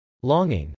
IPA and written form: lˈɔːŋɪŋ (longing)